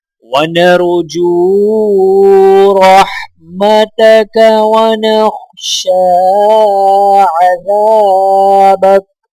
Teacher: شین کے اوپر کھڑا زبر ہے تو لہٰذا ایک الف کے برابر کھینچا جائے گا۔ ذال کو الف کے ساتھ ملاتے ہوئے ایک الف کے برابر کھینچ کر پڑھا جائے گا